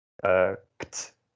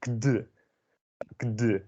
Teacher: It sounds kind of kd, a kind of an awkward transition in your mouth. And kt, that's easier because you don't have to suddenly start voicing.